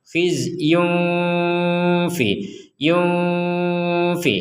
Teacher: Ada tanwin bertemu fa, kita baca dengan samar ya.